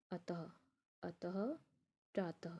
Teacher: तो इसमें हमारे कैसे शब्द आते हैं, जैसे प्रातः, आप लोग कहते हैं ना पोयम होती है प्रातः काल उठना चाहिए, यानी सवेरे सवेरे उठना चाहिए। तो प्रातः त में जो अह की आवाज़ आ रही है, जिसे हम विसर्ग कहते हैं, उसको हम अनुनासिक भी कहते हैं।